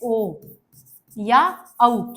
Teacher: कंठ ओष्ठ से मिलकर बना ओ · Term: कंठोष्